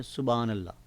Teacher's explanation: یعنی کہ ہا کو بالکل حذف کر دیتے ہیں. سبحان اللہ یعنی کہ حافل میں بیٹھے ہوں یا ویسے منہ سے جب ادا کرتے ہیں، تو عام طور پر جو میرے مشاہدے میں بات آئی ہے وہ یہی کہ سبحان اللہ یعنی ہا کو بالکل استعمال ہی نہیں کرتے، پڑھتے ہی نہیں ہیں.